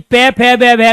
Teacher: और जब तय थे दे का प्रयोग करें तो जीभ बार बार दांतों में लग रही है और तय थे दे में हमारे दांत दिखाई दे रहे हैं, इसलिए दांतों का उच्चारण करते हैं। ऐसी पे फे बे का उच्चारण करते हैं तो हमारे होठ बार बार खुल रहे हैं, बंद हो रहे हैं, तो पे फे बे में हम होठों का इस्तेमाल कर रहे हैं।